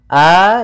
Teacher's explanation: Hamzah itu berarti kita keluarkan dari pangkal tenggorokan kita ketika kita melafalkannya.